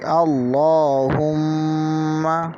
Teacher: غنہ کا مطلب یہ ہے کہ ناک میں آواز لے جانا، یعنی جب میم مشدد ہو تو اس حالت میں ہم ناک میں آواز لے جائیں گے